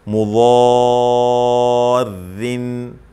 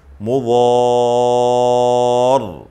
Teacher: اب یہاں را حالت وصل میں را کو باریک پڑھیں گے، اور پھر جب وقف کریں گے تو را کو موٹا پڑھیں گے